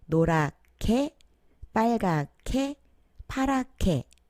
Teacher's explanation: ㅎ meets ㄱ, and make the sound ㅋ. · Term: aspiration